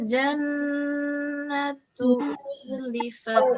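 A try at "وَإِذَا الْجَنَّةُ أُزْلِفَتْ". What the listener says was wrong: Uzlifat. Jangan ujlifat tapi zai. Wa idzal jannatu uzlifat.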